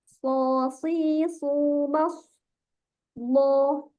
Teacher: terkumpulnya suara di antara lidah dan langit-langit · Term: idbak